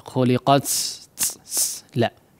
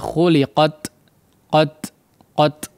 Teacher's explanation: ujung lidah yang dipertemukan atau ditempelkan kepada pangkal gigi seri atas, ya, maka ditekan ya dengan kuat sehingga tidak menyebabkan udaranya terlalu banjir begitu ya. Khuliqat la, ya, tidak begitu, tapi khuliqat qat, nah, sekedarnya saja. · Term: sifat syiddah